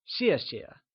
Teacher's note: Note that 谢谢 can simply be broken into two similar parts, except that the second time we say 谢, the sound softly fades away, so it becomes 谢谢.